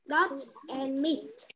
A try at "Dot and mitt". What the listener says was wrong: Very good.